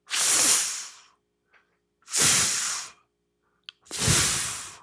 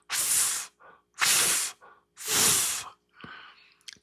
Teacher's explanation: Teeth on lip, and you blow it out. I always say, like a rabbit.